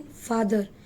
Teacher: A sound is in father. It is open back unrounded vowel.